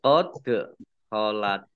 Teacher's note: dal sukun, bacaan qalqalah atau memantul, ditampakkan pantulannya